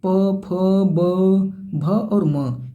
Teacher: बिना ओठ की सहायता से मतलब अगर आप बोलेंगे ना तो आपका दोनों ओठ आपस में टच होगा ही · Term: ओस्ट